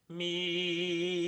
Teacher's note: the me has a very arched tongue me you can see it arches up behind my